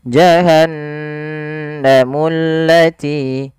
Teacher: Maka allati di sini kita juga bisa masukkan dengan alif lam syamsiyah, yaitu yang diidghamkan langsung ke huruf lamnya dan ditasdidkan. Maka dia pada lafal mullati langsung tekan ke huruf lam.